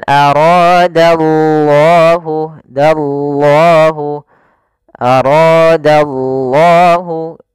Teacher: ra-nya dibaca dengan tebal karena ra berharokat fathah.